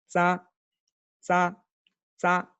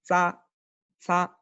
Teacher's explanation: es como anteponer una D antes de la S, como un sonido de DS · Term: sonido de la Z